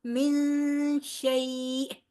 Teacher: نون ساکن کے بعد حروف قلقلہ میں حروف حلقی میں سے کوئی حرف نہیں ہے. شین حروف حلقی میں سے نہیں ہے نا، حمزہ ہا، عین ہا، غین ہا میں سے کوئی بھی حرف یہاں پہ نہیں ہے، لہٰذا نون پر غنہ ہوگا. من شیء، شیء یا لین آ گئی ہے، کیونکہ یا ساکن سے پہلے والے حرف پہ زبر ہے، لہٰذا یہ یا لین ہے اور اس کو تیزی سے پڑھیں گے شیء.